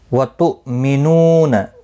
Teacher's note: حمزہ ساکن کو جھٹکے کے ساتھ ادا کیا جائے گا